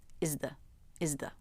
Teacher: But you can't make the S or Z with the tongue tip through the teeth, so we take a different shortcut. We alter the TH by not bringing the tongue tip through the teeth. Is the. It still sounds like a TH to native speakers.